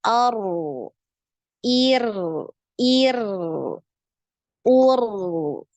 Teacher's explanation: jadi gitu direm dulu takrirnya ya nah jadi sekali aja getarannya kemudian baru dialirkan suara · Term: aliran suara